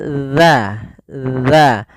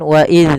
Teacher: Ujung lidah itu bertemu dengan apa? Gigi seri atas. Gigi seri atas. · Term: huruf dzal